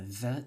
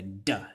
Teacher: And in Cebuano, when the word puede was becoming, when that TH sound on the D, the interdental fricative was going into Cebuano orthography and Cebuano phonology. When it was adapting itself, it changed from a the to a duh, a hard D, right?